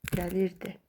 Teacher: Vurğu il hecasından düşür.